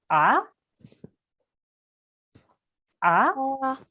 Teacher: So ayn, remember, comes from the middle of your throat.